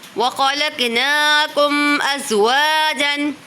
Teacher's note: دیکھیں وہ خوا کو پر پڑھیں گے کیونکہ حرف مستعلیہ میں سے ہے، قوف کو بھی پر پڑھیں گے۔ میم ساکن کے بعد حمزہ آ رہا ہے تو اظہار شفوی ہو رہا ہے، وا پہ الف مدہ ہو رہا ہے۔